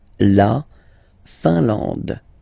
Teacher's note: I-N here, nasal, un. A-N, nasal, en. And then D, final E, not pronounced.